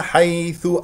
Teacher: مفتوح ياء لين لا تضغط على المخرج ولا تخرج معها هواء الثاء هنا مضمومه حيث ضم الشفتين فيها